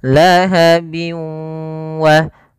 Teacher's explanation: Idgham artinya idkhal, memasukkan ya, maka memasukkan idgham. Bi gunnah atau ya di sini idgham ma'al gunnah, yaitu idgham yang disertai dengan gunnah, yaitu cara membacanya yaitu masukkan suara tanwinnya bin ketemu wa, dimasukkan ke huruf waw dan ditahan karena disertai dengan gunnah.